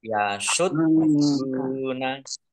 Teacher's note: dalnya dibaca double, ada tasdidnya. Biar tampak double maka ditekan.